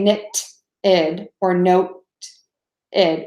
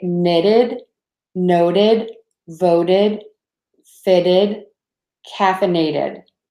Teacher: a fast D sound is a good way to describe it